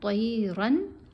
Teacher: رن کے اوپر ہم نے غنہ نہیں کرنا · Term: نون کو بھی ظاہر